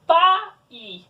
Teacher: o A faz um som mais forte, então ela é uma vogal. E o I faz um som mais fraco, então ela é uma semivogal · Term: encontro vocálico